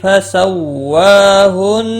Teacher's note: نون مشدد پر گنہ ہوگا